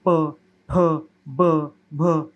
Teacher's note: ओठ हमारे हमारे जो होंठ है वो एक दूसरे को लगते हैं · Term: औष्ठ